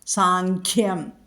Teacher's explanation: അനുസ്വാരത്തിന് ശേഷം ഖ എന്നുള്ള അക്ഷരം വന്നതുകൊണ്ട് അവിടെ കവർഗ്ഗം വന്നതുകൊണ്ട് അവിടെ അനുസ്വാര ഉച്ചരിക്കുന്നതിനു പകരം ങ് ഉച്ചരിക്കുക